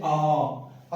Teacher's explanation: विवृत की बात करूं तो ये आता है पूरा मुंह खुलने के लिए, जैसे आ बोलते तो हम पूरा मुंह अपना खुलता है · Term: विवृत स्वर